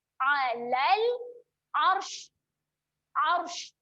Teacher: untuk berhenti kena bunyi menyembur sikit sebab ada huruf shin